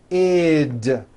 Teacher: we add the ending id, which is a vowel I followed by a D, which is voiced.